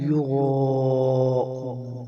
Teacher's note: را کے آگے الف مدہ ہے اور اس کے اوپر مادہ ہے، اسے 4 الف کے برابر کھینچیں گے